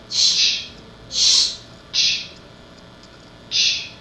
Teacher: There is no vibration, and that's because ch is a voiceless sound.